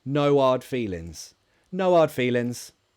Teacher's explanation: the H in hard feelings I just I wouldn't say it that specific expression feels a bit less formal a bit less posh so I would drop the H